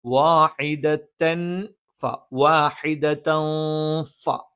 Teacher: തൻവീന് ശേഷം ഫ വന്നു, അത് ഇഖ്ഫ ആണ്. ആ തൻവീനിനെ അവ്യക്തമാക്കി മണിച്ചുച്ചരിക്കണം